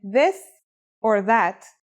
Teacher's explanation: pronunciation is a voiced sound the as in this or that it's pronounced with the tongue between the upper and the lower teeth